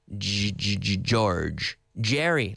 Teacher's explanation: the J is pronounced almost like a CH with the vocal cords activated. So we're vibrating the vocal cords.